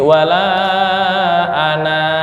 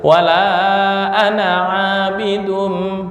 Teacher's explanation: ana ketika berhenti maka panjang satu alif, tapi ketika wasol ya menjadi hilang, jadi dibaca pendek. Makanya wala ana abidun nggak boleh, wala ana abidun, nah itu nggak boleh. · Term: Sifir mustatil